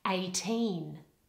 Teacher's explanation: in the word eighteen we tend to put the stress on the ending and the ending has a long eval okay eighteen so they